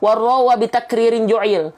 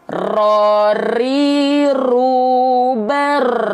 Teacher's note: takrir itu artinya dia bergetar tapi tidak terlampau banyak-banyak sedikit saja